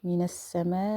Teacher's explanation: مد لازم متصل، اور اس کی جو کوانٹٹی ہے بتائی تھی میں نے 6 الف ایکول، یعنی ہم اس کو 6 سیکنڈ کہہ سکتے ہیں.